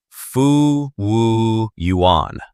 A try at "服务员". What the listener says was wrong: A little bit too flat. The second syllable, 物, goes down, like you're dropping something. 服务员.